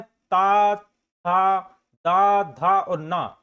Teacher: ता वर्ग ता के अंतर्गत आता है ता था द धा और न और इनका उच्चारण स्थान दंत से होता है